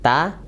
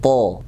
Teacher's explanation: Bedanya ta tipis, rahangnya tarik dan lidahnya terdampar.